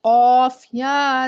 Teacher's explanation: है और या साकिन उससे पहले जेर या मद्दा कहलाती है या मद्दा को हम एक अलिफ के बराबर खींच के पढ़ेंगे